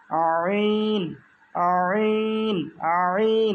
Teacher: কণ্ঠনালীর মধ্যখান হইতে আওয়াজকে চাপাইয়া উচ্চারণ করতে হয় আইন, আইন, আইন। একটু মুখটা ছড়ায় রাখবে, হ্যাঁ।